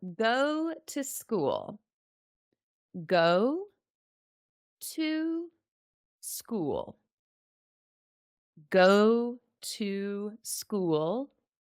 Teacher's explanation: the word to becomes very short and very fast